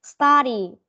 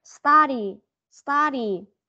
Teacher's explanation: Study, âm á chứ không phải là âm u.